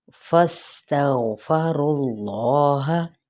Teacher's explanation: फा की ज़बर को सीन के साथ मिलाते हुए सीन पे सीटी को वाज़े करेंगे।